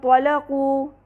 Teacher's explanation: غنہ جو ہو رہا ہے وہ مفخم ہے کیونکہ طا ہے اگلا حرف، لہٰذا اخفاء حقیقی مع الغنہ المفخمہ.